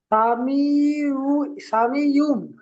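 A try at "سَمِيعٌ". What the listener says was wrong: ইউম না, উম। ওম একালিপ গুণনা করে পড়তে হবে। সা টান দেবেন না। সা, সিন যাবার সা হারাকাত টান হয় না। সিন যাবার সা, মিম ইয়াজের মি, একালি টান দেবেন।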